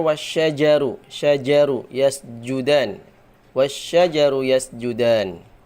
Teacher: keluar dari tengah lidah bukan dari ujung lidah · Kalau enggak fasih, maka jim akan berubah jadi bacanya enggak ja tapi ga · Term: huruf jim